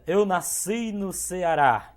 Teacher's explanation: A tônica você vai contar até a última, porque é uma palavra oxítona, né?